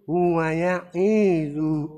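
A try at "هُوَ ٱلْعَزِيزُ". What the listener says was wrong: Kurang panjang terakhirnya.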